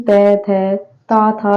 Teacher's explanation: त वर्ग वाले ये दंत से बोले जाते हैं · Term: दंत वाले